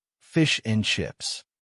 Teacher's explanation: But you hear fish and chips. Not in, just n.